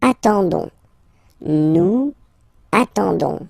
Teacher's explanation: Okay, but then nous is coming here, all right, and then we'll get the classic ending for nous, so O-N-S, okay, you don't pronounce the S, so you get only this on sound